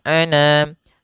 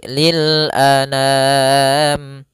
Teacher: A sempurnakan hamzah, jangan anam, jangan dibaca dengan dengung atau dibaca dengan masuk hidung